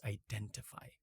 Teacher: with the T is more in line with the RP or received pronunciation accent of British English